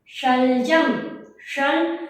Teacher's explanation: तालव्य श क्यों है बच्चों, हमारे जो ये मुख है, मुख के अंदर का भाग, खाली वाले जगह का ऊपरी भाग होता है, जो खाली जगह, उसको क्या बोलते हैं, तालु। जब आप श बोलो, शलजम, शल, तो आपकी जीभ ऊपर टकरा रही होगी तालु पे, उसी को क्या, इसी वजह से श का नाम क्या पड़ा, तालव्य श, क्योंकि इसका उच्चारण स्थान कहाँ से होता है, तालु से।